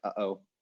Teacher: of creates this impression that there's like like a little um it's kind of a latent vowel sound along with the glottal stop because you're still producing the vowel sound when you make the glottal stop so there's kind of an echo of the vowel that's probably